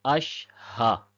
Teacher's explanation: پھر یہ والی ہا جو کہ حلق یعنی گلے کے آخری حصے سے جو سینہ کی طرف ہے وہاں سے ادا ہوتی ہے